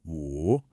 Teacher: My voice starts high, it dips down, and then it comes right back up. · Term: falling then rising tone